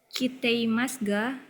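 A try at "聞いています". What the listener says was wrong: Bukan kiteimasu. Ini i-nya ada 2. Jadi bacanya kiteimasu ga.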